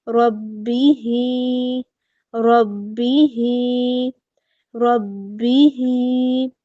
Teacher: آگے دیکھتے ہیں ہی، اس کو ہم نے دو حرکات لمبا کیا کیونکہ یہاں پہ کھڑی حرکت آ گئی ہمارے پاس، کھڑی زیر ہے تو دو حرکات اس کو ہم لمبا کریں گے